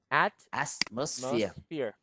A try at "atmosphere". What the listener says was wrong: At doesn't have an S. Atmosphere.